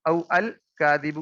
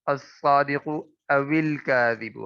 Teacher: इस वाव साकिन के नीचे जेर देकर आगे मिला दिया है